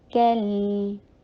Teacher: तो उसको टू हरका लॉन्ग करना है, रैली, अब ली शॉर्ट, रै टू हरका लॉन्ग, ली शॉर्ट, कल, काफ को लाइट रख के लाम के साथ मिलाइए